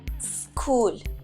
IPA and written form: skuːl (school)